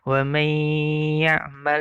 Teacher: Jadi bacaan hunnah itu dibaca agak lebih lama ya, karena ada hunnah ya, sekitar 2 harokat.